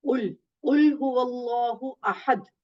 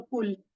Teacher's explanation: اور آپ نے جیسے ہم چاروں کل پڑھتے ہیں جب, تو ہم کہہ دیتے ہیں کل, تو کل جو ہے وہ موٹے قاف کے ساتھ